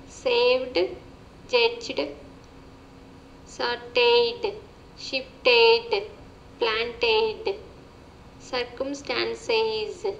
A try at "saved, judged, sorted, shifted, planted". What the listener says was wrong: Okay, you're exaggerating the sounds a little bit, but you're trying to make an effort to pronounce those EDs, so I can appreciate that.